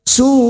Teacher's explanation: fathah tanwin bertemu ya idgham bi gunnah masuk siap masuk dan mendengung masuk pada huruf berikutnya yaitu huruf ya dan mendengung selama 2 atau 3 harokat